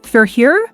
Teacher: if you say, for here, with a rising tone, it's a question